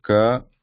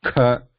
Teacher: So the first series here, the guttural sounds, ka, kha, ga, gha, nga. So ka, non-voiced, muted, less breath. Kha, same, muted, more breath.